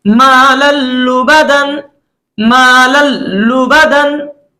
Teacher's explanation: हमने लाम को लाम के साथ डायरेक्ट मिलाया और तनवीन के नून की जो आवाज थी उसको हमने खत्म कर दिया, हमने उसको नहीं पढ़ा, यानी मालन लुबदा या मालन लुबदा ऐसा भी नहीं पढ़ा गया। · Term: इदगाम बिला गुन्ना